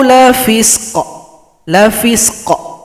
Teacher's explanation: Kalau kita berhenti, maka qafnya disukunkan, berikan bunyi pantulan. Sempurnakan dulu huruf sukun yang sebelumnya.